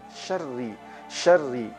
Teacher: Kemudian huruf ro. Huruf ro pada kalimat syarri kita baca tipis. Tidak kita tebalkan.